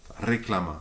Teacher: On substitue au re français la R espagnole, ce qui donne réclame, et on rajoute un A à la fin. Réclama, c'est un R roulé au début.